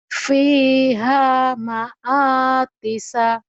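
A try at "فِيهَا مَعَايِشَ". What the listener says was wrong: Bukan Tisa, Isa. Orang titiknya di bawah. Fiha ma'ayisha. Shin. Fiha ma'ayisha. Fiha ma'ayisha.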